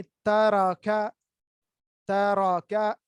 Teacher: कैफ जो है वो नरम करके पतला करके पढ़ना है